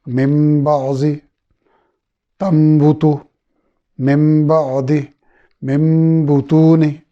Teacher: ہم نون کو میم میں بدل دیں گے، نون ساکن کے بعد با آنے کی وجہ سے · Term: اقلاب